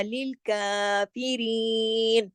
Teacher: کاف کھڑی زبر کے ساتھ ہے، ایک الف کے برابر، یعنی 2 حرکت کھینچ کے پڑھا جائے گا